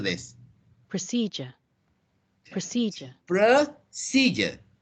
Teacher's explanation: The D-U-R-E pronunciation is J, not dio.